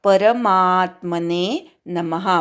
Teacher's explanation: र पूर्ण म्हणायचा. खूप जण अर्धवट र म्हणतात.